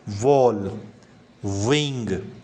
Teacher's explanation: So the back of your tongue approaches the velum as for velar sound. आपका जो back of tongue है वो आवाज़ निकालेगी.